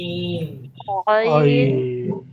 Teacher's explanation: আইন যেন গলা চিপে আদায় হয়। ঠিক আছে, গলার মাঝখান থেকে গলাকে চিপ দিয়ে আইনটাকে বের করব।